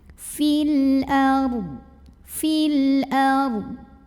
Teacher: Fil ardh. Kemudian ra-nya dibunyikan secara tafkhim karena huruf sebelumnya berbaris fathah. Maka dibacanya tebal, pangkal lidah diangkat.